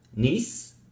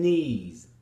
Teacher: the final s causes the preceding sound to be cut short · niece is very short because of a strong s ending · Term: clipping